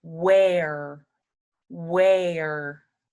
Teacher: instead of a t or an N at the end we make a r sound